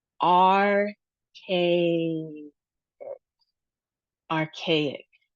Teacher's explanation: And then we see the umlaut, which is ah, archaic, archaic. And the emphasis is on the second syllable.